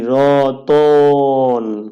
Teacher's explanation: আমরা যখন উচ্চারণ করি রতন এই তর সাথে একটা অ চলে আসে এই অটাকেই এখানে দেখানো হয়েছে এবং সবশেষে দন্তন্য তার মানে মাঝখানে